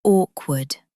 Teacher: both W sounds are pronounced